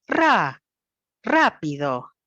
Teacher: la altura tonal el tono de la voz empieza más alto y termina más bajo ra rápido los otros dos puntitos permanecen a en un tono